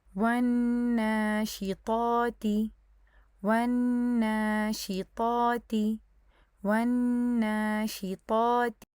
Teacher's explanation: ادھر آخری مثال میں دیکھیں، یہاں پہ آپ کو نون شد نظر آ رہی ہوگی اور ساتھ ہی میں آپ کو الف صغیرہ بھی نظر آ رہی ہے، تو اب اس کیس میں آپ کیا کریں گے کہ پہلے واو کو تو آپ نون کے ساتھ جوائن کریں گے، نون کے اوپر غنہ کریں گے اور اس کے بعد الف صغیرہ کی 2 کاؤنٹس اس کو مد دیں گے